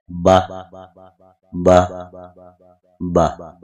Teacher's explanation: دونوں ہونٹوں کے جب تری والے اندرونی حصے آپس میں ملتے ہیں تو حرف با ادا ہوتا ہے۔